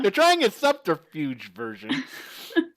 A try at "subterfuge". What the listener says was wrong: You don't pronounce the B. It's just subterfuge.